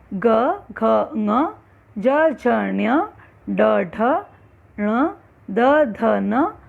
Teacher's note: स्वर तंत्रियों में वाइब्रेशन जब होता है बोलते वक्त व्यंजन को, वो है सघोष व्यंजन। इनका उच्चारण करते समय यदि गले पर हाथ रखा जाए तो कंपन का आभास किया जा सकता है।